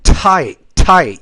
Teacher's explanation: you have to pronounce that t with more air so it doesn't sound like a d